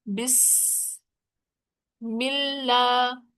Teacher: سین میں سیٹی کی آواز ہے